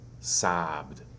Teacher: The ed ending after a voiced consonant sound sounds like a D.